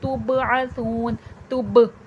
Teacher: तुब देखिए इसमें आवाज़ पलट कर सुनाई देगी क्योंकि यहाँ पर बा है, बा हुर्फ़ क़लक़ला है।